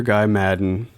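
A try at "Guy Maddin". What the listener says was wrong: Canadians pronounce Guy as Guy. Like G-E-E.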